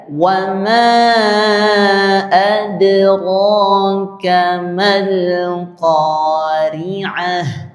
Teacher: Wama itu ada panjang dibaca empat harakat. Dipanjangkan lebih dari dua harakat.